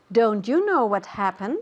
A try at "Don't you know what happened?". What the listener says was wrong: Don't you know what happened? I want to hear the T's a little bit more. Don't you know? Don't you know?